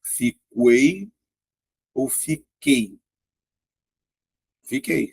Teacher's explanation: Ou seja, a letra U não é pronunciado. · Ou seja, a letra U não é pronunciada. Então, na verdade, na palavra fiquei, ó, eu não tenho tritongo. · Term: dígrafo